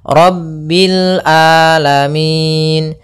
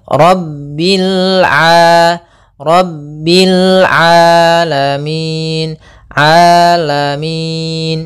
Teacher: hati-hati jangan sampai merubah huruf ainnya menjadi Hamzah banyak yang terjadi kesalahan dalam pelafalannyaitu dengan Alif atau Hamzah maka